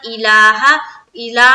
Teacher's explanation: اس کے بعد الہ، الہ میں دیکھیے لام کے اوپر جو کھڑا زبر ہے اس کو 1 سیکنڈ اسٹریچ کریں گے